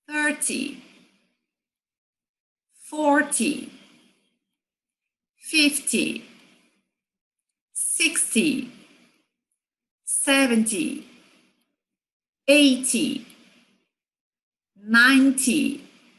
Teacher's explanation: percebe que esses números fosse o t y e no final a sílaba tônica de todos esses números das dezenas em inglês é a primeira mais forte